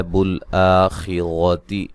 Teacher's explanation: بالآخرتی آ مد اصلی ہے، خا کو موٹا ادا کریں گے اور را کو موٹا ادا کریں گے